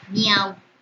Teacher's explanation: A abierta entre I y U que son cerradas. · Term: triptongo